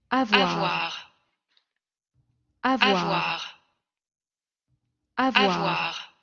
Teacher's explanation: Estamos con este fonema labiodental, el sonoro.